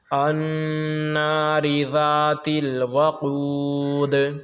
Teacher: ان نون پر جب تشدید ہو تو نون پہ بھی غنہ کریں گے